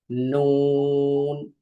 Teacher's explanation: জিহ্বার আগা তার বরাবর উপরে তালুর সঙ্গে লাগিয়ে উচ্চারিত হয় নুন, নুন। আর নুন বলার সময় ঠোঁটটা গোল হবে নুন।